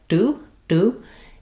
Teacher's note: No burst of air, closer to a d sound, but a different type of t. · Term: unaspirated t